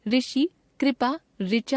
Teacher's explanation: हिंदी भाषा भाषी इसका उच्चारण र जमा इ ऋ के रूप में करने लगे और आज यही हिंदी का मानक उच्चारण बन गया है। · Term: ऋ स्वर, री स्वर